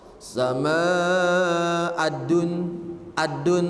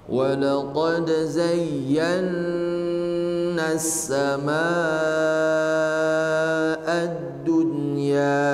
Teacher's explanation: Ad-dunya itu dalnya dibaca dengan sempurna dan jangan ikhtilas, jangan tergesa-gesa.